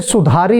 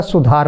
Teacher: छोटे ऊ की मात्रा और छोटी ई की मात्रा उच्चारण में नहीं आती, बोलने में नहीं आती।